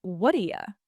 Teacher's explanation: That T just disappears. Or it becomes a different sound, like a quick D sound. It's called a flap.